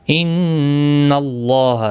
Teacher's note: یہاں پر اب زبر کی وجہ سے پر پڑا جائے گا. اس کے اوپر کھڑی زبر بھی ہے، ایک الف کی مقدار کے برابر کھینچ کر پڑھیں گے.